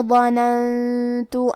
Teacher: کلمت ظننت، یہاں حرف الضو ہے اور ضو کی ادائیگی زبان کے سر اور اوپر والے دانتوں کے اندرونی کناروں سے ہے، اور کیونکہ ضو حروف تفخیم میں سے بھی ہے تو ہم یہ حرف کو بھاری آواز میں پڑھیں گے. یہاں نون ساکن ہے، پھر حرف تا ہے، تا حروف الاخفاء میں سے ہے اور اخفاء کا معنی ہے چھپا دینا، تو ہم نون ساکن کو چھپاتے ہوئے اور غنہ کے ساتھ یہ حکم کو ادا کریں گے.